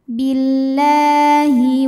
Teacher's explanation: biasa disebut dengan Idgham Syamsi Billah la Mad Thobi'i muqaddar karena huruf lam berbaris fathah yang panjang cara membacanya panjang lamnya dua harakat